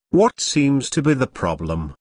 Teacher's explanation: notice that the intonation Falls at the end of the question